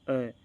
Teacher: य मध्य वाला भाग है ना वह काम करता है या मेरी जीभ ना तो आगे जा रही ना पीछे जा रही